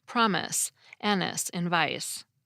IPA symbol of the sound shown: s